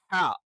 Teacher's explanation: ഹ എന്നുള്ളത് നിങ്ങൾക്കറിയാം തൊണ്ടയുടെ മധ്യഭാഗത്ത് നിന്നാണ്